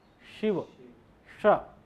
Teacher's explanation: जो हम शिव वाला है बोलते हैं ना उसका उच्चारण स्थान जो है वह तालू होता है